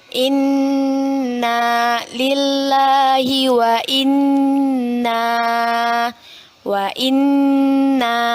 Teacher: kita baca berdengung dan ditahan dua harokat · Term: ghunnah, gunnah